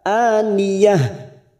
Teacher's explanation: Min ainin aniyah, fathah berdiri 2 harokat. Aniyah, ujungnya kita rem, kita ganti ha